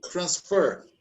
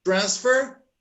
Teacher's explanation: The verb receives the stress in the second syllable and the noun in the first syllable for all the words that have the same spelling for both noun and verb, noun and verb.